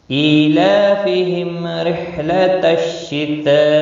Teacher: حمزہ کے نیچے کھڑی زیر ہے، 1 الف کے برابر کھینچ کر پڑھیں گے